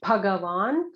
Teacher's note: notice the Bha is a Mahaprana.